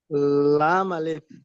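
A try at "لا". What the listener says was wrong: বাহ, মাশাল্লাহ ভাই, অনেক সুন্দর পড়েছেন, কিন্তু টানগুলো হয়নি। আমরা যে উপরে যে অক্ষরগুলো যেমন টান দিয়ে পড়ে এসেছি, এই যে লাম, লাম কিন্তু 3 আলিফ পরিমাণ টান আমরা পড়ে এসেছি, তাহলে কেমন হবে? লাম আলিফ।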